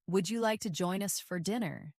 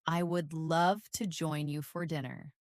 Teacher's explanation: First, the question with a rising tone.